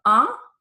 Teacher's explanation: it's more like a I sound or u sound but again coming through the nose · it's more like a I sound or a U sound, but again, coming through the nose. And this one is a more rounded sound, okay, where you really round your mouth, but then it comes through the nose, okay? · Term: nasal sounds